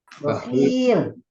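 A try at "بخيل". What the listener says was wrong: Sifatnya bukan bakhil tapi khinya yang panjang. Bakhil.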